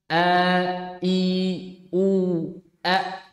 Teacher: Hamzah itu makhorijnya dari pangkal tenggorokan. Iya, bisa dikatakan bawah ya, tenggorokan bawah.